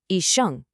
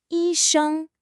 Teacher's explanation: The first tone has to be high and level. A lot of people let it waver. Yi sheng. No, it's high and sustained.